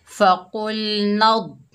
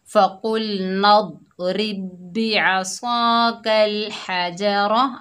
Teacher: द्वाद में कलकला पैदा नहीं हुआ